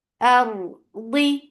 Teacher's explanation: Aw, hamza is keep hamza light, but ra heavy, ra will get sifa of tawassut, and ra will be heavy because there is fatha before it.